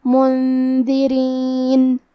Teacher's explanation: نون ساکن ہے، پھر حرف الدال ہے، دال حروف الاخفاء میں سے ہے، تو ہم یہ حکم کو غنہ کے ساتھ ادا کریں گے